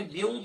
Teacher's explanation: اب دیکھیں بیوں کیا تو آواز ناک میں چلے گی، تو یہ ادغام مع الغنہ کہتے ہیں اس کو